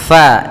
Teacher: Jangan dibaca pa tapi FA alirkan nafas kita